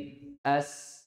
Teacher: Yaitu apa? Lemahnya yaitu kedua sisi makhraj bertemu sehingga suaranya mengalir. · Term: rakhwah